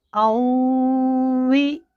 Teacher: حمزہ کو واو کے ساتھ ملائیں گے، یہاں پر غنہ بھی ہوگا، واو پر ہونٹ بھی گول ہوں گے